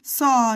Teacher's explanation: make sure it's low, it's an aw sound